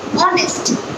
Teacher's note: I have pronounced O sound. I have not pronounced H sound.